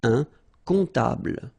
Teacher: And then, strangely, this P is not pronounced.